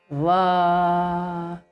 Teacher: for VA we are using upper teeth and the inner part of the lower lip